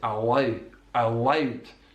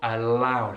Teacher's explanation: So it's a dark L, not a light L on the L of allowed.